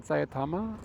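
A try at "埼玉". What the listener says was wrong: It's Saitama. Yes. It's Saitama, not Sayatama. Yes, but that's Sai. Kudasai mas? You don't add the extra bit to it. Sayatama.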